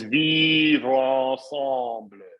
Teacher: So rather than a linking, that's called an elision, which means the normal, so vivre would normally be pronounced with a mute sound, right? but what the unaccented e disappears and aligns with the next word. So it's vivre ensemble, right?